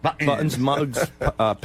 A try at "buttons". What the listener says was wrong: T. You got to say a T.